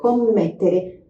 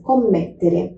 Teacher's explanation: É só dar uma forçadinha mais naquela pronúncia daquele M, ó. Commettere. Meio segundinho a mais na pronúncia. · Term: dois M's